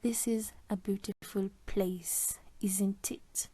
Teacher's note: the intonation falls then rises. It is used with question tags or tag questions. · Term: fall rise intonation